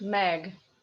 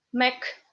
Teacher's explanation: In Russian, Mek. Because this G becomes K only in the end of the word.